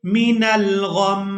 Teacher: यहाँ पर हमने मीम के नीचे से ज़ेर को हटा देना है जब हमने वक़फ़ करना है, और मीम मुशद्दद पर हमने गुन्ना करना है वक़फ़ की सूरत में भी